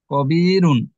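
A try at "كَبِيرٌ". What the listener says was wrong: না, এটা লাস্টে হ। হুন হুন। কবি হুন। ক ক।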